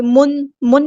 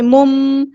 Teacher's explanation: تنوین کی آواز کو میم میں بدل دیں گے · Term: اقلاب